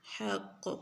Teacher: قاف کو موٹا پڑھیں گے اور کلکلا بھی کریں گے